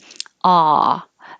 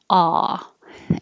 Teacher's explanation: the tongue is very low and flat in the mouth, and the jaw is very open